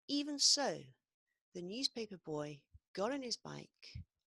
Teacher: So I keep my big stress there, but I also add a big stress on so